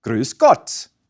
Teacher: the vowel oo is pronounced with your lips in the usual rounded position but your tongue moves forward. So say oo and now keep your lips rounded but unbunch the tongue from the back of your mouth and move it slowly forward along the upper pallet. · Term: front tonguey